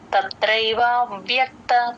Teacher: వ కింద య వత్తు ఎప్పుడు వచ్చినా సరే ఈ పైన టీత్ కింద లిప్స్ కి జాయిన్ చేస్తే ఆ వ్య అనే ఆ కరెక్ట్ గా వినిపిస్తుంది అన్నమాట.